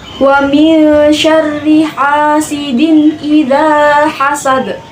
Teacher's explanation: Nah, wa min syarri ini terdapat hukum bacaan ikhfa yaitu berdengung dua harokat dikarenakan nun bertemu dengan salah satu huruf ikhfa yaitu sya